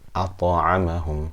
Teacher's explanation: The qalqalah, the bounce is very small.